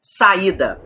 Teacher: Saída, o A e o I ficam em sílabas separadas. Aí é um hiato.